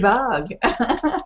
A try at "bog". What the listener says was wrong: Oh, now I heard the one. It's O sound. Bog. Bog.